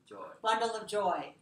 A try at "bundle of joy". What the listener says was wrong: Bundle of joy. Don't lose the O. You have to keep syllable. Sometimes I hear you Miss this syllable and you say bundle. So I want to make sure you have remember the schwa is in here.